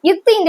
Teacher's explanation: பல்ல வந்து பின்னாடி அடியில போய் டச் பண்ணுது அப்ப இத்து இந்துன்னு சொல்லும்போது நாக்கோட நுனி வந்து மேல்வாய் பல்லோட என்ன பண்ணுது பொருந்துது